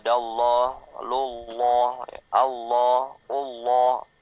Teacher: Yang lapas Allah itu tebal kalau dia sebelumnya fathah atau doma.